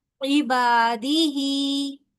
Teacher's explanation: با جتنا ہم نے لمبا یہ عبا کیا اتنا ہی لمبا ہم ہی کو بھی کریں گے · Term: کھڑی زیر